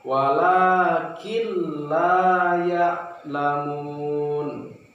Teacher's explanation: cara membacanya tidak didengungkan tetapi dimasukkan ke huruf kedepannya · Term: Idgham bilagunnah